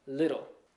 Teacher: When we say little here in America, we change our T's into D's. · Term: medial T's